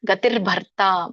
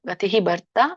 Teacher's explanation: ಸೊ ಇದು ತಾಕ್ಕಿಂತ ಮುಂಚೆ ರ ಹೇಳ್ಬೇಕು. ಗತಿರ್ ಭರ್ತಾ ಬಿಡಿಸಿದಾಗ ಗತಿಹಿ ಭರ್ತಾ ಆಗುತ್ತೆ.